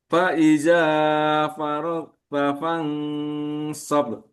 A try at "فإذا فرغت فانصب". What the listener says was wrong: Dua harokat saja panjangnya. Faiza. Faiza faragta fansab. Faiza faragta fansab. Sob. Ab. Kita lihat bahwa ro kita harus lihat di tenggorokan atas al faro ro faro